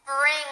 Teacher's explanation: you say the n sound very quickly and then you force out the G sound from the back of your throat